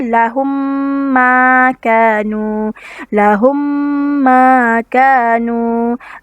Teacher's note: dibaca dengan merapatkan kedua bibir berserta dengung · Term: idgham mislain syafawi